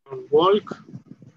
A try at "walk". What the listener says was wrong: Walk. Uh-huh. Don't pronounce the S.